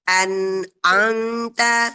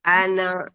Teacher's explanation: lepas ya nunnya, tetap nempel pada mahrajnya. An'amta, lepasnya ketika mau menyebutkan huruf ain ya.